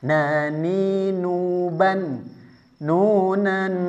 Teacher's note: Jadi harus ada ghunahnya, dengungnya keluar dari khaisyum, rongga hidung. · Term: idgam bighunah